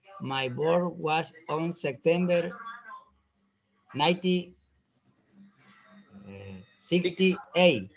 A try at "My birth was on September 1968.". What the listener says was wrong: Okay, very good.